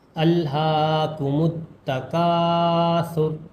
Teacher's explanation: کاف میں الف ملا ہوا ہے اس لیے ایک الف کے برابر کھینچ کر پڑھیں